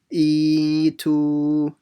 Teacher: Make sure you stretch both of them the same amount.